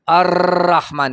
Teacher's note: رخوت کامله پیدا شي اواز په مخرج کې مکمل جاری شي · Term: تقریر حقیقي